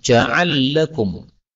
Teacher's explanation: Ja'ala lakum, lam ketemu lam, ini boleh idgham